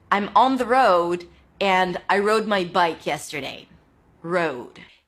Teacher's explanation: Another R word, round your lips, then it's the O as in go, road, and finish it up with a D.